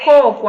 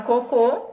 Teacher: Isso, porque aí a sílaba tônica mudou de lugar, né? Na palavra coco, a sílaba tônica é a inicial. Na palavra cocô, a sílaba tônica é a final.